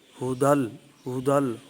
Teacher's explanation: ہدل کی جو ہا ہے اس کے اوپر جو حرکت ہے پیش کی صورت میں اس کو معروف پڑھیں گے۔ ہدل، ہدل ہو نہیں پڑھیں گے، ہدل لل، یہ لل جو ہے اس کو بھی معروف پڑھیں گے، لل نہیں پڑھیں گے۔